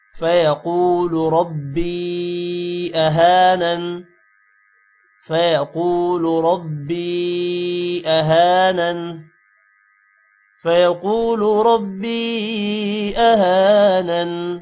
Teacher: جس کی وجہ سے تھوڑا سا لمبا کریں گے فیقول ربی را موٹا ہوگا یا پر مد ہے تھوڑا سا لمبا کریں گے · قاف موٹا ہوگا اور قاف کے بعد واو ہے جس کی وجہ سے تھوڑا سا لمبا کریں گے